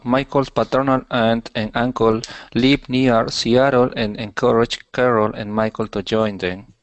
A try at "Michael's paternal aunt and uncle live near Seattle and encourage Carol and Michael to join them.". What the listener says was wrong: Okay, good. Good, good.